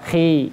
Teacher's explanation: Jadi kalau dia ketika ketemu huruf istilah ini berarti dia wajib naik pangkal lidahnya. Khi, walaupun dia kasroh tetap naik, tapi tingkat ketebalannya, kenaikannya agak di bawah. Ya. Khi, beda dengan ketika dia harokat dhammah ataupun fathah.